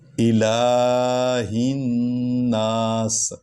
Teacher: تیسری آیت، الہ الناس، یہ لام کو الف کے نیچے زیر ہے، اور لام پر جو ہے کھڑا زبر ہے، اس کو لمبا کریں گے۔